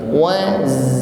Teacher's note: pastikan ada sifat shafir ya, ada desis yang mengalir